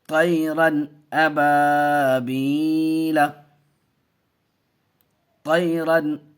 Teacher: نون کو ظاہر کر کے بلا غنہ کے جلد پڑھیں گے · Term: اظہار